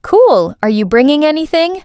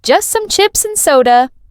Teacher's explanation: Notice how the questions go up in tone and the answers go down.